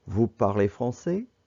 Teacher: vous parlez français put a question mark at the end and when you pronounce it your voice goes up at the end that's why it's called rising intonation